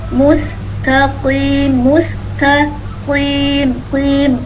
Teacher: Qafnya isti'alah. Walaupun kasrah, tafhimnya tetap ada.